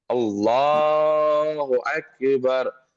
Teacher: لام جب پڑھیں گے تھوڑی سی موٹی آواز ہوگی ہماری